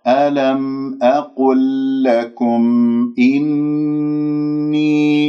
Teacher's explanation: ألم أقل لكم إني، هذه نسمع صوت الميمات، لأنه الميم يشترك فيه مخرجين، مخرج شفوي ومخرج خيشومي. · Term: مظهرة